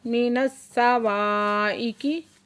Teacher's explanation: स्वाद मुशद्दद है, सख्ती से पढ़ेंगे और वाव पे अली मद्दा है, 2 हरकत खींच के पढ़ेंगे।